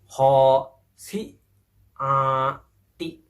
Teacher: huruf shin adalah tengah lidah kita ditempelkan pada kerongkongan kita yang paling atas